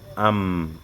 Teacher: mimun est souvent accompagné du nasillement am, un son au niveau du fond des narines